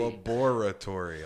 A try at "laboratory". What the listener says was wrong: You're getting there. Turn the E to an A.